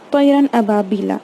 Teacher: تو ہم اس میں تنوین اور نون ساکن کو نہ ہی کھینچیں گے، نہ ہی ناک سے یا این جی ساؤنڈ میں پڑھیں گے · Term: اظہار